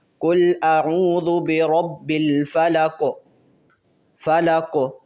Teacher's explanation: ویسے تو قوف کے نیچے زیر ہے، لیکن جب ہم یہاں پہ وقف کریں گے، قوف کو ساکن کریں گے، تو اس لیے جب ہم یہاں رکیں گے تو قوف پہ ہم نے قلقلہ ظاہر کرنا ہے۔ قل اعوذ برب الفلق، فلق۔